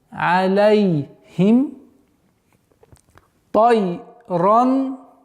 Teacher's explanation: Чтобы звук ле не происходило, не переходило, чтобы она явно не выражалась. Звук ля, алей нужно до конца фатху произносить над буквой лям.